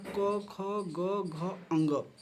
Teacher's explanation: कंठ प्लस नासिक से बोला जाता है अंग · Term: नासिक वर्ण